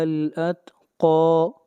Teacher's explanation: قاف حروف مستعلیہ میں سے ہے، اس کو موٹا پڑھا جائے گا